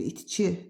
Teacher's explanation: I incə qapalı dodaqlanmayan saitdir. · Deməli vurğu ikinci hecaya düşür.